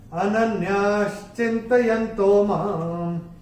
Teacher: पहले चरण में मां के ऊपर चरण की समाप्ति पे जो विसर्ग जो अनुस्वार आ रहा है, अनुस्वार चरण की समाप्ति पे आएगा तो उसका उच्चारण केवल और केवल मां होगा